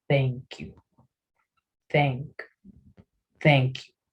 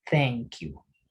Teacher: Este sonido se realiza colocando pues la lengua en el borde de los dientes superiores, ¿sí? Y haciendo un sonido de S, ¿sí? Thank you, thank you, ¿sí? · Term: sonido de TH